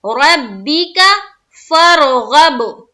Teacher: با کو 2 مرتبہ پڑھنا ہے، شد ہے